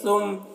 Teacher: میم پہ تشدید ہے تو اس کو ڈبل بھی پڑھ رہے ہیں اور غنہ بھی کر رہے ہیں۔ تو نون اور میم پہ جب تشدید ہو، نون مشدد ہو یا میم مشدد ہو تو غنہ کرتے ہیں۔